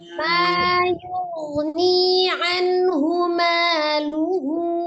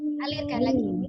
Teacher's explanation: Ghainnya dialirkan, ni-nya mad, nun-nya izhar.